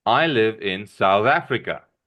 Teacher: my voice, my volume when I speak will rise when I get to South Africa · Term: rising intonation